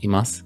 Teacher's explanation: But this u part is often an unvoiced vowel. So it sounds like more like imasu often.